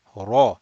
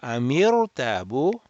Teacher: Ra mufakhama, raise the back of the tongue. That's how you round the ra, not rounding the mouth